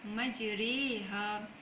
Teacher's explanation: mencondongkan baris atas kepada seakan-akan kita menyebut baris bawah, tetapi tidak menyempurnakan baris bawah tersebut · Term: imalah